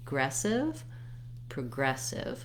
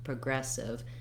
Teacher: You can hear how I barely said the PRO syllable. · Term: rhythm and the length